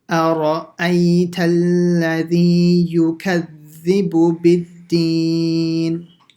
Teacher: so a, empty mouth, ra, full mouth, and a, again, empty mouth